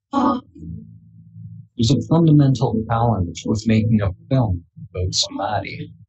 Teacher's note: Fundamental is a stressed word. Challenge is also another stressed word. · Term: stressed words